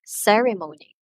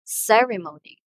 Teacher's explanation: So the first syllable receives the emphasis in pronouncing the word. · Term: stress